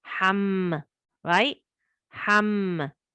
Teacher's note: remember it's a ghunna, so you have to do it for 2 counts